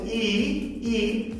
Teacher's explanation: ই যখন বলছেন ই জিহ্বাটা তো নিচে না, মোটামুটি একটু উপরে আছে